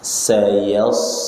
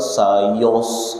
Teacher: yang tebal sodnya, ya-nya jangan ikutan tebal.